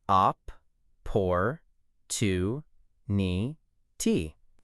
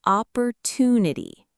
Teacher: The stress, the strong sound, is on tu.